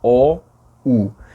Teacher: Ou quando você diz O e U, a língua está recuada.